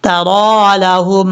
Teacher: را کے اوپر کھڑا زبر ہے، لمبا کریں گے، یا کو چھوڑ دیں گے